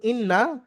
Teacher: নুনকে এক আলিফ পরিমাণ গুন্না সহ পড়তে হবে।